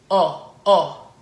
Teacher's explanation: the letter O and French is pronounced very open